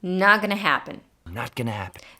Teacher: not is pronounced with a stop t it's when you put your tongue into the position for a t but don't release it